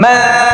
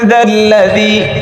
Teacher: এখন বলো দালের মাখরাজ কোথায়? জিহ্বার আগা সামনের এই দুই দাঁতের আগায় লাগায়।